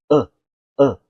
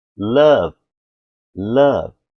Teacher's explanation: é o som do A que tem só no inglês, é o som do A, vem do fundo da garganta